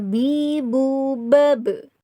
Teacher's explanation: bibir atas bersentuhan dengan bibir bawah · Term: huruf ba